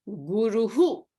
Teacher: the vowel before the visarga is ooh so the pronunciation of the visarga will be the who sound in the end